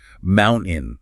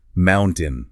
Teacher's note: Notice how there is no T sound at all.